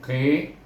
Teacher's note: qaf baris depan, baris bawah bunyi qi, terangkat pangkal lidah